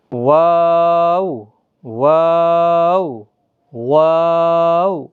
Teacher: دونوں ہونٹ گول ہو جاتے ہیں جب واو ادا ہوتا ہے، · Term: حروف شفویہ